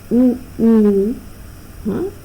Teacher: And when you say oo, okay, what happens to that gap? It almost closes, and this sort of rounding is known as close rounding. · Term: close rounded